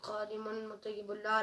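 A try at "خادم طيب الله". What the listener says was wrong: خادم طیب اللہ مطیب اللہ نہیں ہے، خادم طیب اللہ.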